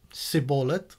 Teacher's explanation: The Ephraimites sadly could only pronounce it as Siboleth without the sh, and whenever anyone said the word like that, the men would take them aside and finish that person off.